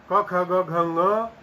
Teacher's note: क ख ग घ ङ हकार और विसर्ग ये सारी की सारी ध्वनियां कंठ हैं, क्योंकि इनका उच्चारण स्थान कंठ है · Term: कंठ ध्वनियां